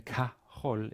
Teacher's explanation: K is like, ha, definite article, and then chol, and of course the he of the definite article, as always with the short prepositions, is elided, it falls away, and there's a contraction happening, you get ka.